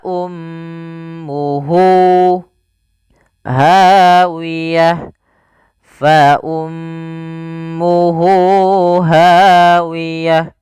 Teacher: Mad yang kita panjangkan dua harakat disebabkan karena ada ha damir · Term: mad silah